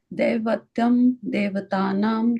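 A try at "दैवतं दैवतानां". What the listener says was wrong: Yeah, the daivatam and daivata I sound. Daivatam daivatanam. No, not they. Daiva. Yeah, both of them are the dai sound.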